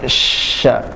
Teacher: Huruf sya tempatnya ada di tengah lidah.